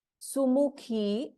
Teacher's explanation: ಇನ್ ಸುಮುಖಿ ಖ ಇಸ್ ಮಹಾಪ್ರಾಣ